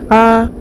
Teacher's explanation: کے جلد پڑھیں گے، عین، حمزہ کے اوپر کھڑا زبر ہے، کھڑا زبر برابر ہے الف مدہ کے، ایک الف کی مقدار کھینچ کر معروف پڑھیں گے